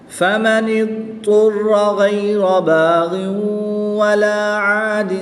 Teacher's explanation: را کے اوپر زبر ہے تو اس لیے را کو پر یعنی موٹا پڑھیں گے